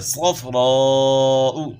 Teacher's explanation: الف مدہ کے بعد حمزہ ہے، تو یہاں جو ہے مد کی مقدار 3 سے 4 الف کے برابر ہو جاتی ہے · صاد موٹے حروف میں سے صاد کو آپ نے موٹا پڑھنا ہے